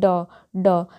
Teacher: आप लोग खुद ड बोल कर देखिए ड ड यानी कि जीभ जो है ना मुड़कर ऊपर मुड़कर ऊपर की तरफ सट रहा है टच हो रहा है